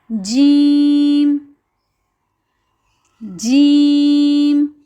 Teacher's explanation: ہماری زبان کا جو درمیان کا حصہ ہے وہ مقابلے میں جو اوپر تالو کا حصہ ہے اس سے جا کے لگتا ہے تو لفظ ادا ہوتا ہے جیم.